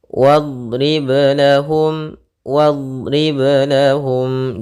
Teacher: ba sukun yang dimana dia termasuk huruf qalqalah, jangan sampai ada tambahan hamzah ataupun apapun, dia mengalir suaranya ketika qalqalah ya di tengah bacaan.